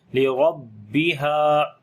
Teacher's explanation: وَأَذِنَتْ لِرَبِّهَا را کو موٹا پڑھیں گے، اس کے اوپر زبر ہے، با کو تھوڑا سخت کر کے پڑھیں گے، شد کی وجہ سے تھوڑا رکیں گے بھی · ہا کو لمبا کریں گے، الف مدہ ہے، اور ہا کو گلے کے درمیان والے حصے سے پڑھیں گے